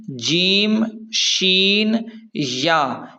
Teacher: جیم، شین اور یا کی مخرج زبان کے درمیان سے ہے۔